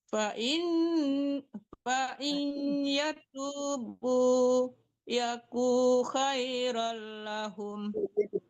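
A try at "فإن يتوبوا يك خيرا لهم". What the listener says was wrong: Ku-nya tidak panjang.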